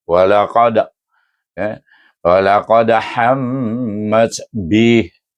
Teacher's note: Maka dia berada di pertengahan antara kubra dengan sugra, dipanggil qalqalah mutawassitah.